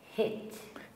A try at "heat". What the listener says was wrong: Not hit, no. heat, heed, heed.